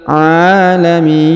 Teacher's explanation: Huruf mi dipanjangkan 2, 4 atau 6 harokat karena di depannya terdapat ya sukun sebelum huruf pemberhentian, dan huruf pemberhentian huruf na disukunkan atau dimatikan karena berada di ujung ayat atau di ujung bacaan kita.